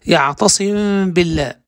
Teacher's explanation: فتخفى أي الميم مع بقاء غنتها إذا وقعت قبل الباء الموحدة، نحو يعتصم بالله، ويسمى إخفاء شفويا أو شفويا، فهذا هو الأول.